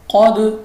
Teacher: next ہمارے پاس پھر دال ہے، دال ہمارے پاس پھر کلکلا ہے اور مستعلیہ کے ساتھ جڑا ہوا ہے، تو ہم اس کو پڑھیں گے قد، موٹا پڑھیں گے اور دال کو واپس نکلتی آواز کے ساتھ